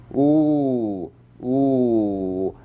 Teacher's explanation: Number one, ooh, ooh. The full stretch with the smallest lip opening is called number one, ooh.